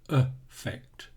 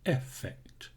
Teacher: The first one uses a schwa, affect, and the second one is an e sound, effect.